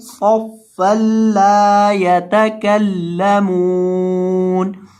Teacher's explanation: حالت میں نون کو ساکن کر دیں گے صفا لا یتکلمون، میم کو لمبا کریں گے اور صاد کو موٹا کریں گے اور لام کو لمبا کریں گے